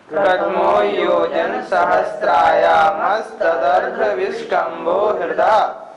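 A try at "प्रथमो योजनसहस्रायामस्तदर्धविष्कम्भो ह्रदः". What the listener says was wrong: उच्चारण फिर एक बार देखें। प्रथमो योजन सहस्राया, सहस्त्राया नहीं, सहस्रायामस्तदर्ध विष्कंभो हृदः।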